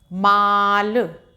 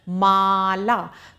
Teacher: ठीक?कि हमने यहां पर आ की मात्रा लगाई है। तो इसका उच्चारण ला को भी हम खींच कर बोलेंगे और मा को भी खींच कर बोलेंगे। माला। तो जहां भी खींचकर इस तरीके से शब्द बोलते हैं तो आप समझ जाइए वहां पर आ की मात्रा का प्रयोग हुआ है।